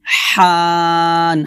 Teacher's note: হাটা কলকের মাঝখান থেকে চিকন করে বলতে হবে। ওয়ার রাইহান, হান হবে না, হবে হান, হান।